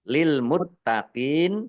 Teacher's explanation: Rumah tanwin bertemu dengan huruf lam, bacaan idgham di lagunah, masuk dengan tidak mendengung. Masuk ke huruf lam. Rumah tanwinnya tidak dibaca. Ditandai dengan lamnya ada tasdidnya. Lamnya dibaca double.